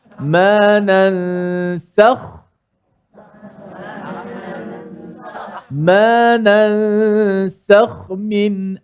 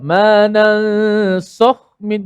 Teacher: Bila kha kita dah tebal, kena pula jaga sin tu supaya tak terikut tebal macam kha.